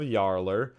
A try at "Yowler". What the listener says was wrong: Yowler, not Yarler. You said Yar. Yarler. Like Howler, but with a Y.